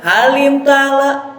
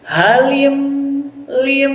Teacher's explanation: Nah, di sini ada mim mati, mim sukun bertemu selain mim dan ba. Ya, hukumnya adalah idhar syafawi. Nah, jadi mim sukunnya itu harus jelas. Halim lim. Nah, jadi tidak boleh halim ta'ala.